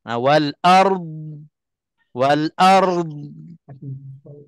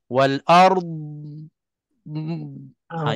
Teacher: Bila hujung sekali sebelum kita nak putuskan nafas, kedudukan lidah itu dah pergi tempat keluarnya huruf dad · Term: makhraj dad